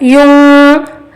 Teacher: نون ساکن کی آواز کو ناک میں چھپا کر گھمائیں گے، اخفا ہوگا